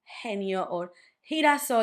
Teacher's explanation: you can do it like a very strong aspirated H from the English. Instead of doing genio and girasol, you would do genio and girasol.